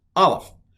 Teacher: It's a glottal stop. It really doesn't make a sound, it stops the sound.